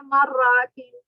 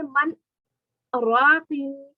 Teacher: من کے نون کو ساکن پڑھتے ہوئے ہی سکتہ کریں گے، اس نون کو را میں نہیں ملائیں گے